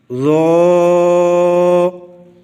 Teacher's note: سامنے والے دانتوں کے نیچے زبان لگانی ہے اور آواز کو موٹا رکھنا ہے، تب ذو پڑھا جائے گا